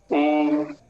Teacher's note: अब ऊ में भी जीभ का कोई काम नहीं है, ओष्ठों का काम है